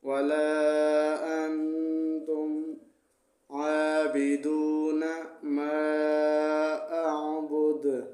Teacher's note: یہاں پر دال کو ہم نے وقف میں ساکن پڑھا ہے تو دال پر قلقلہ ہوگا وقف میں۔